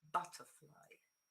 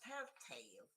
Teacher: the main stress is on the first word